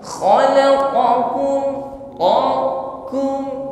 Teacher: Kaf ini setelah syiddah juga ada sifat hamus jadi agak sedikit lemah tidak sekuat tekanan pada huruf q